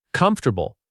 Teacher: This word has four syllables when you write it, but native speakers only say three. It sounds like comfortable, not comfortable.